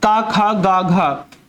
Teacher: का वर्ग का उच्चारण स्थान होता है कंठ